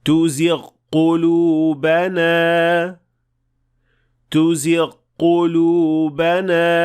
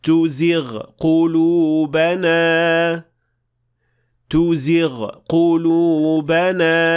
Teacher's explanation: غلطی اس طرح سنائی دیتی ہے: تزغ قلوبنا تزغ قلوبنا. جبکہ انہیں دو الگ حروف کی طرح سنائی دینا چاہیے، کیونکہ ان آوازوں کو مدغم نہیں کیا جانا چاہیے